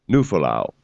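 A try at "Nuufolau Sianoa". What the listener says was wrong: No, I think it's You have to pronounce both U's.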